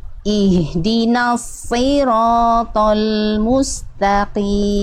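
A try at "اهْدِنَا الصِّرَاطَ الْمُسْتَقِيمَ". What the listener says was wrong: Oke, sin sukunya sedikit Bunda, jangan mustaqim, jangan terhenti. Karena Bunda udah buru-buru ke taknya, jadinya mustaqim, jangan nah tapi musta. Tambahannya satu Bunda ya, di sin sukun tadi sempat mustaqim, jangan Nah, tapi itu berarti Bunda udah buru-buru ketak, jadinya terhenti esnya.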